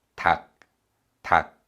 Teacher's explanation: And 리을 is similar to the English L, and 기역 is similar to the English G. But when we read this word, 리을 is silent, and we only pronounce the 기역.